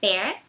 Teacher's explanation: bear tem esse som aberto, como se fosse com acento agudo no E, bear. E beer é como se fosse yeah, beer.